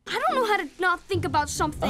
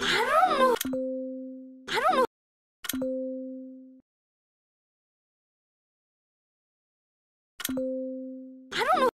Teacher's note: the word don't loses the t sound resulting in i don't know · the word I loses the y sound at the end, and the word don't loses the t sound